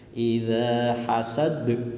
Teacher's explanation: idza hasad dza panjang satu alif yang namanya mad tabi'i, dan hasad yaitu qalqalah kubra, huruf qalqalah artinya mendatang disebabkan dibaca waqaf.